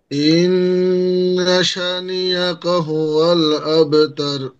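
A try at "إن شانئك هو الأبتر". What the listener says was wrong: সা একালিপ টান হবে, এটা মাঝে মাঝে ছুটে যায়। ইন্না সানিআকা হুয়াল আবেতর।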